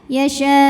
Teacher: Yasya belakangnya agak dihentak ya, ditekan ke makhraj huruf hamzah